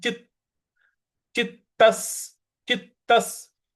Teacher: अगला पद है योगिनो यत चित्तस्य योगिनो यता चितस्य देखिए यहां पे चित जो चित आधा त है वहां पे हमको हल्का सा बल लगाना है